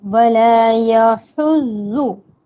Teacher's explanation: आइन और हा हलक के दरमियानी हिस्से से अदा होता है। हा हलक, आपके मुंह से हवा बाहर आती है जब आप हा बोलते हो।